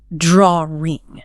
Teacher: Sometimes, especially in certain accents, you'll hear an intrusive R sound slipped in